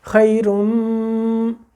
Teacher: ہو جائے گا، خیرم، اب را ملی جا کے میم سے، میم کے اوپر تشدید آ گئی، غنہ ہو گیا، ہم نے ہونٹ بند کر دی